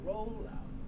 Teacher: The L sound moves over, so you get roll out.